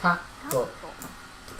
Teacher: Again, the pause needs to take one clap.